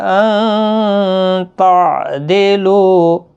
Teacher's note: نون ساکن کے بعد حروف اخفا کا تا اخفا حقیقی ہوگا